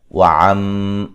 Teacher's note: عین کو واضح نکالیں گے، میم مشدد پہ غنہ ضروری ہے